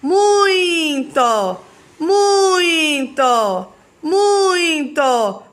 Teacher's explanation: ele é considerado como vogal por porque ele tem maior força muito começa lá em cima e depois diminui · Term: ditongo decrescente